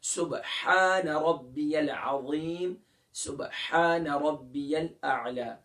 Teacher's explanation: تو یاد رکھیے عین اور ہا یہ متحد المخارج ہیں، اور ہا کا مخرج کیا ہے؟ وسط حلق، یعنی درمیان حلق سے ہا ادا ہوتا ہے